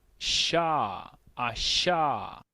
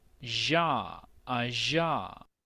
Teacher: se aprecia mucho mejor la diferencia entre un sonido sordo o silbante sha, asha, y un sonido vibrante